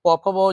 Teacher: प का आप जब उच्चारण कीजिएगा तो देखेंगे, यानी प फ ब जब पढ़िएगा तो देखेंगे कि जो ध्वनि निकल रहा है वो ओठ की सहायता से निकल रही है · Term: प वर्ग